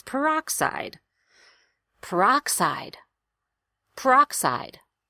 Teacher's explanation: really sit on the strongest syllable make that aa vowel louder and longer